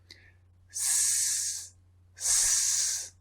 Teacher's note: the S sound, S, is unvoiced because there's no vibration